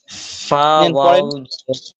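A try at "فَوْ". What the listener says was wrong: ফাও না, ফাউ, ফাউ মুখ গোল করে, ফাউ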